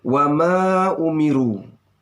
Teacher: mat jais munfasil ya sama dengan mat wajib muttasil, bacaannya 2,5 alif atau 5 harakah